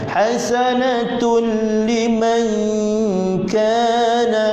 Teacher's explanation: Huruf kaf depan sedikit daripada makhraj huruf qaf, pangkal lidah. Jadi huruf kaf ni makhrajnya depan sedikit daripada pangkal lidah.